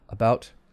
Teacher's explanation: the schwa is very quick it's very relaxed it's very relaxing so it's in the center of the mouth and very short